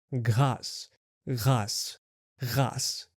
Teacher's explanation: think of the word like the English h, but instead of the voiceless sound like in house, add to your voice by blending in a g sound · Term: glottal sound